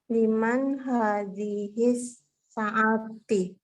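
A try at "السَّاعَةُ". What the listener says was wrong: Saatu, kok kan saati?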